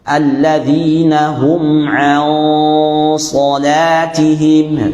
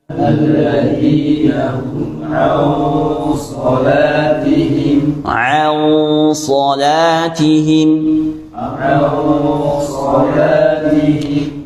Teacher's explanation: nun sukun ketemu shad, huruf shad itu tebal, maka gunnahnya tebal